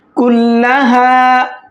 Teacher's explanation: اس کو 1 الف کے برابر کھینچیں گے کیونکہ یہاں پر الف مدہ ہے